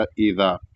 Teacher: یہ سورۃ الزلزال ہے، جس کو تجوید کے ساتھ پڑھنے کا طریقہ یہ ہے کہ ایذا، سب سے پہلے ایذا دال ہے تو اس کو پتلا ادا کیا جائے گا، اور دال کے ساتھ الف ہے تو اس کو ایک الف برابر کھینچا جائے گا